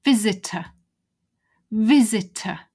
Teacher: notice that it's just a schwa weak sound